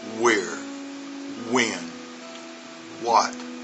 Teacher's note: The next one we're going to do is the WH sound, and the H is really silent. The H in those words really does not make a sound, so basically it's just a good W sound.